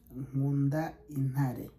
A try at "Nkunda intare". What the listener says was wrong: intare. So you don't pronounce the T. Very, like, you don't, it's pronounced like a ha. Intare. Not intare.